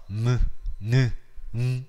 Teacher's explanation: 발음해 보시면 약간 코가 울리는 소리가 날 겁니다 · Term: 콧소리